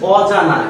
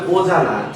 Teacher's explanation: নাবাচক অব্যয় বা উপসর্গের ক্ষেত্রে অ ধ্বনি ও হয়। যেমন হচ্ছে অজানা, কিন্তু আমরা উচ্চারণটা হবে অজানা, ঠিক আছে?